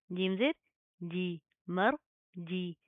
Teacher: جیم کے اندر آپ نے چی کے ساؤنڈ پیدا کرنے سے بچانا ہے